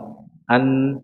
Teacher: Huruf nun makhrajnya dari mana? ujung bertemu dengan langit-langit atas ya. An rapat ya an artinya rapat itu nempel.